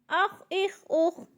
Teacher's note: خا حروف حلقی میں سے نہیں ہے، اس کو ہلا کے نہیں پڑھنا، موٹے لفظوں میں سے ہے، موٹا کر کے پڑھنا ہے اور جلدی سے ادا کرنا ہے